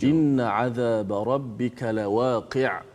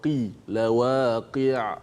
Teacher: Inna 'adzaba rabbika lawaqi'. Ada huruf qaf yang baris bawah, kemudian ada huruf ain yang kena mati sebab wakaf. Lawaqi'. Huruf qaf tu pastikan berbaris di bawah dengan betul.